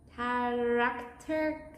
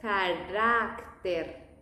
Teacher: In English, it might sound like character, and that's when the tongue is not that curved. In the Spanish pronunciation, it's more flat.